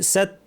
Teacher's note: তা এর শেষে একটু বাতাস থাকবে।